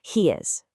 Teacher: The word he ends with that long E sound, and is starts with a vowel. So what happens is we naturally build this little ya sound bridge to connect them.